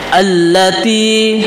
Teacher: sebenarnya di sini ada dua lam alif lam dan lam maka untuk mempermudah kita maka lamnya dijadikan satu dan ditasdidkan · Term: Alif Lam Syamsiah